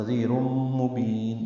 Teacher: تنوین کے بعد میم آنے کی وجہ سے ادغام ہے، ادغام ناقص ہے، غنہ ہوگا · با کو لمبا کریں گے اور نون ساکن پہ اظہار ہے